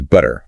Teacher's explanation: when it's between vowels it gets softer almost sounds like a d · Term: flap